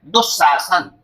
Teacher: दंत स नहीं है, तालव्य स है